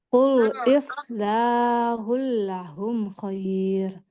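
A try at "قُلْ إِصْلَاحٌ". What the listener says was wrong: Nah, itu kayak keluar lidah. Bunyinya kayak keluar lidah. Ils, coba ils, ils. Ils, ils. Qul islahul.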